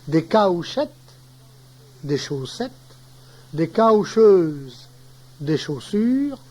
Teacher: Les diphtongues, aou, prononciation francienne du français maintenue en cauchois